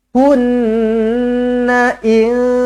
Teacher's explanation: Nun sabdu wajibul gunnah, dengungkan dua harakat.